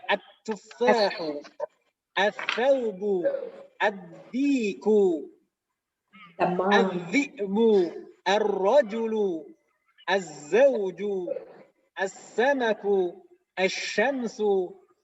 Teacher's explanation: kalau ditambahkan al di depannya, maka langsung idgham lamnya tidak terucap · Jadi kalau misalkan ditambahkan al, semuanya langsung idgham ke huruf tersebut. Lamnya tidak terbaca.